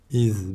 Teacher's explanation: iki ön dişlerimiz dilimizin ucu az bir şey çıkacak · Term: Peltek